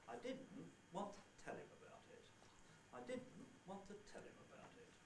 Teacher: the low falling leveling out pattern on tell beginning of tell the first one is the falling rising pattern beginning on did · the second one consists of a head want to nucleus tail and tail again about it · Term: two word groups